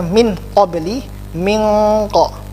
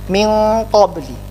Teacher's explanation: Nunnya memang tidak sempurna, terlihat samar, langsung disambut dengan huruf qaf. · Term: ikhfa